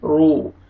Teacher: را کو آپ نے موٹا کر کے پڑھنا ہے اور واو مدہ ہے، را کو آپ نے کھینچنا بھی ہے